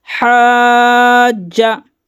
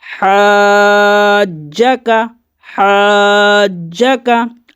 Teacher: ہا کو جیم میں ملائیں گے، پھر جیم کو ڈبل پڑھیں گے۔ جیم زبر جا، حاجہ۔ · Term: تشدید